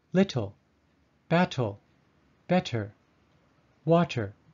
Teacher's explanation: americans sometimes voice the t